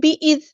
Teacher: حمزہ کی آواز واضح ادا کرنی ہے، زال کو باریک نرمی سے ادا کرنا ہے اور زال ساکن کو ہلانی ہے